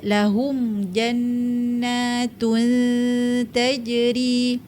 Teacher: bila ta ni merupakan huruf nipis kita dengung mesti kena nipis